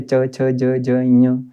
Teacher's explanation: इसी प्रकार से जब हम चवर्ग का पूरा पढ़ते हैं तो ये तालु से होता है, यानी कि जब हमारी जीवा ऊपर तालु में टकराती है